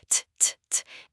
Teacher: It is not heavy or loud. It is a tiny tap made with the tip of your tongue. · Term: sound t